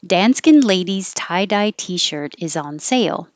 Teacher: start high with dan skin and come down